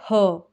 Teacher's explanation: ह का जब हम उच्चारण करते हैं तो जो हवा है वह निकलती है कंठ के भीतर से जो हमारा स्वर यंत्र है वहां से निकलती है तो इसका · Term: काकल वर्ण, काकल्य वर्ण